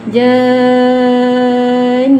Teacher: Nun sabdu dia akan jadi 2 harakat dengung.